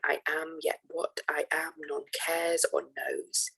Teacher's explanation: we can see the fact that the last syllables are frequently stressed and um the second to last unstressed and the one before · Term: iambic pentameter